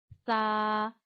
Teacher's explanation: जब आप सा की अदायगी करते हैं तो इसमें सीटी नहीं लाते हैं